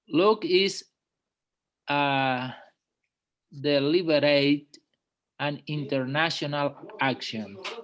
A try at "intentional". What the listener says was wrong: Not international. Intentional.